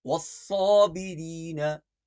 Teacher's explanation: والصابرین کی صاد کو ہم موٹا پڑھیں گے